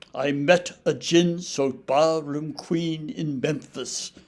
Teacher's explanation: most of those lines should be in diamond pentometer that is five units called feet with a relatively weak syllable followed by a relatively heavily stressed syllable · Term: iambic pentameter